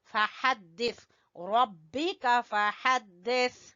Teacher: जबान की नोक और ऊपर के दांतों के सिरे टकराने से सा अदा होता है